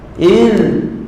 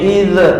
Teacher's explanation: Huruf zal ini huruf yang mana bila kita matikan tak ada qalqalah.